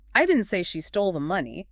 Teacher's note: Let's stress the action itself. The verb stole.